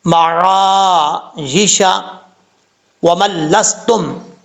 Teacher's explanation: عین کو پڑھتے وقت آپ نے حلق سے آواز نکالنی ہے اور حمزے کی آواز نہیں نکالنی